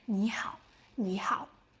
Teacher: when 2 third tones appear back to back, the first one sounds like a second tone